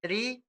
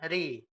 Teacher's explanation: Tapi kalau dia harokatnya kasroh, ri, maka dia itu tipis, ya, ri, tipis.